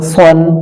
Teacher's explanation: সদ শক্ত হবে কিন্তু মোটা হবে, শক্ত এবং মোটা হবে